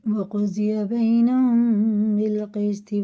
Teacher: وَقُضِيَ بَيْنَهُمْ، یا ساکن سے پہلے زبر ہے، اور فعلین ہے، جلدی پڑھیں گے، کھینچیں گے نہیں۔ اور میم ساکن کے بعد با ہے، تو یہ غنہ اور اخفا دونوں کر کے پڑھیں گے۔ یہ اس کو کہتے ہیں اخفا شفی، یہ اخفا شفی۔